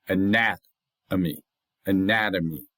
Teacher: So, the NAT is stressed · the A at the beginning, the O in this third syllable, and the mi in the fourth syllable, that's not stressed